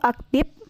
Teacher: fonem F diucapkan menjadi P. Contoh salahnya yaitu aktif, akhirnya P, sedangkan yang benarnya yaitu aktif menggunakan F.